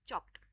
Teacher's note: if you are adding ed to it, the sound will be of kind of t